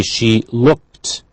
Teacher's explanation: Ed we write, but we hear t